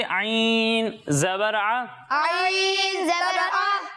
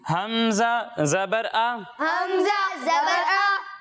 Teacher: हलक के दरमियाने हिस्से से। और जब हम हमजा की अदायगी करेंगे तो इसे हलक के निचले हिस्से से पढ़ेंगे।